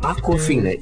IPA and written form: ˌɑːkwəˈfiːnə (Aquafina)